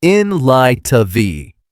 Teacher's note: 3 words that sound like 2. The T in light almost disappears. It flows into the of.